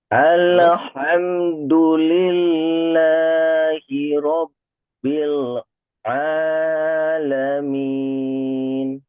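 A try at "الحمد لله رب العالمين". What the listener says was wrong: Di situ bagus lamnya tidak terpantul tapi di al masih terpantul.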